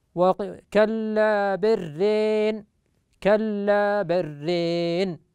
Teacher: وفتحة الراء فيقرأها شعبة رين رين مع إدغام اللام في الراء فيدغم اللام في الراء للتقارب بينهما ويميل كلمة ران